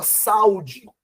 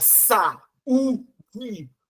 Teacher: O U é mais forte que o A. Então separou porque você tá com duas vogais agora e vogal com vogal não fica junta.